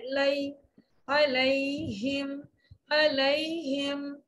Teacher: یا لین کی ادائیگی میں ہونٹ دائیں بائیں مسکراہٹ والے انداز میں ذرا سے پھیلا کے پڑھتے ہیں تو مخرج بہت اچھا ادا ہوتا ہے.